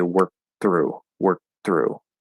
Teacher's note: because we just stopped the k we're very likely to actually just do a regular th there um it just makes it a little easier in this particular